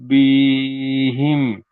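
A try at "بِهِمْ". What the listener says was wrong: বিহিম, বি টান দিলে হবে না, বিহিম। টান হবে না, গুণনা হবে, ইন্না বিহিম। তাহলে এখানে গুণনা হবে এই জন্য নুনের উপর তাজদিদ এসেছে, গুণনা করা অজীব, তাই গুণনা করে পড়তে হবে।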